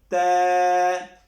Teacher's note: بھی آخر میں جو ہے وہ ہم جھٹکا نہیں دیں گے، بغیر جھٹکے کے ہم اس کو پڑھیں گے ت، اور یہ باریک ہے، اس کو ہم باریک ہی رکھیں گے ، اس کو طا نہیں پڑھیں گے، ت اور طا کے